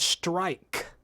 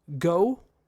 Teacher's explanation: The word strike, 1 syllable. But do you hear how much longer I needed to actually emphasize strike than go?